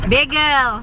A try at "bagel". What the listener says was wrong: Bagel. Beagle is a dog. Beagle. Bagel. Bay. Like a little body of water. A bay. Not beagle. Bagel.